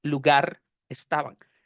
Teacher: la consonante al final de la palabra se la presto a la vocal con la que empieza la siguiente